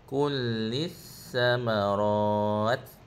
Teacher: lissa tu bacaan nipis. Dibaca hujung lidah.